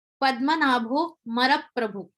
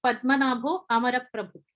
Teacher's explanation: He did not focus on the a syllable.